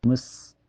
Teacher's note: ujung lidah nempel ke tempat tumbuh gigi seri bawah ya, dia mempunyai sifat sofir dan hamas, keluar napas dan suara yang berdesis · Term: sin sukun mutlak